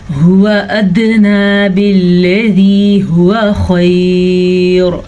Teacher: ہاں کے تلفظ کا دھیان رکھنا ہے، یہ سینے سے نکلتا ہے